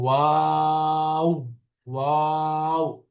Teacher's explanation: প্রথমে মুখ খোলা ওয়া, এরপরে ওয়াও আবার শেষে মুখ বন্ধ হয়ে যাবে